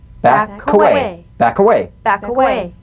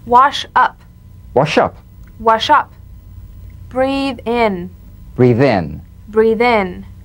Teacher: final consonants linked directly into vowels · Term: linking